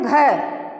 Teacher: अब घय का उच्चारण करते हैं, घय का जब हम उच्चारण करते हैं तो कहते हैं घय, यानी कि घय बोलते ही सारी वायु बाहर निकल के आ जाती है, तो घय क्या हो गया, महाप्राण हो गया, ठीक है ना, ये महाप्राण हो गया।